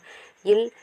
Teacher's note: இல் மேல்வாய் பல்லின் அடியை நாவின் ஓரங்கள் தடித்து நெருங்குவதால் பிறக்கின்றது. இல் மேல்வாயை நாவின் ஓரங்கள் தடித்து தடவுவதால் பிறக்கின்றது